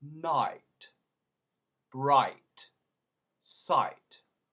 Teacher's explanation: in england the way to do the i sound is actually ah